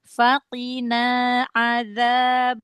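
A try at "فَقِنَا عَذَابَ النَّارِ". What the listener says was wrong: qafnya jangan ada hamas.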